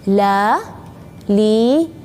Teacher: lebih ringan atau ketika mendengarnya lebih tipis dari huruf L yang dalam bahasa Indonesia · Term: huruf lam